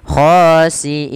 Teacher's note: Kita memanjangkannya boleh 2 harokat, boleh 4 harokat, boleh pula 6 harokat. Kita ambil yang 4 harokat yang tengah-tengah saja, tidak terlalu panjang dan tidak terlalu pendek. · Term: mad arid disukun